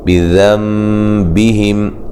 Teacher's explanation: یہاں نون ساکن کا اقلاب مع الغنہ ہے